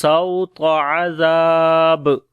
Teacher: واو لین ہے، نرم پڑھیں گے، طا کو موٹا پڑھیں گے · عذاب، زال کو نرم پڑھیں گے، لمبا بھی کریں گے